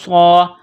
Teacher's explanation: صاد میں سیٹی کی آواز پیدا کرنی ہے